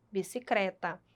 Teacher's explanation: Observem, gente, o papagaio, no lugar do L, bicicleta, ele utiliza o R